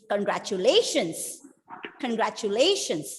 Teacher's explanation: I want to stress on the fourth syllable. · Just look at the penultimate syllable. Let all the other syllables be in the same tone, but just stress, emphasize on the penultimate syllable.